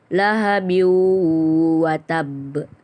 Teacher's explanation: huruf wawu harus dibaca melebur dengan huruf sebelumnya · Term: idgam bigunnah